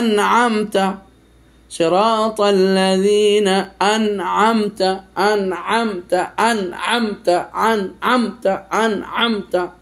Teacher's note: সাকিন অথবা তানবিনের উচ্চারণটা স্পষ্ট হবে কোন প্রকারের গুন্না হবে না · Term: এজহার